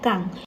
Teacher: Fonem konsonan NG mempunyai fitur distinktif plus konsonan, plus sonoran, plus nasal, minus silabik, plus belakang dan plus tinggi.